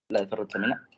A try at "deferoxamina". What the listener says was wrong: Ojo, DF, como defecar, deferoxamina, no DES.